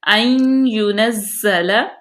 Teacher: حروف یرملون میں سے تو یہاں پہ ادغام ہوگا، این یونزل، زا کو سختی سے پڑھیں گے، سیٹی کی آواز پیدا کریں گے